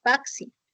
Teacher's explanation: Por ejemplo, en la palabra taxi, representa la oclusiva velar sorda seguida de la fricativa alveolar sorda